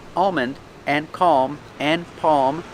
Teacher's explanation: these words have Alm but the L is silent or you don't hear it · the tongue goes up like you're going to make an L but it never touches the roof so you don't hear an L